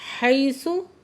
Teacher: या साकिन से पहले ज़बर है तो यालीन है, नरमी से पढ़ रहे हैं।